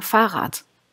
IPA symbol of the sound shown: t